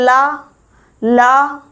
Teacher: जो अंदर से स्वास वायु आती है वो हमारी जीभ के बगल से होकर निकल जाती है। यानी कि पार्श्व से होकर निकल जाती है। · ल तो जीभ सीधी खड़ी हो जाती है और जो अंदर से हवा आती है वो जीभ के बगलों से निकल जाती है। इसलिए ल को पार्श्विक व्यंजन बोलते हैं।